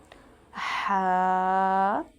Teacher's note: वस्त हलक यानी हलक का दरमियानी हिस्सा। वहां से हा और आइन अदा होते हैं।